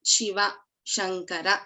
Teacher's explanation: When we are talking about Shakara, as in Shiva, that is called as Talavya Shakara.